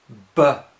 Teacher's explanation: When we do B, you close your lips. It stops the air.